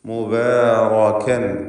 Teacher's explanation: റാഇന് തഫ്ഖീം കൊടുക്കണം. തടിപ്പിച്ച് റാഇന് ഉച്ചരിക്കുക. ഫത്ഹ് നൽകപ്പെട്ട സന്ദർഭമാണ്.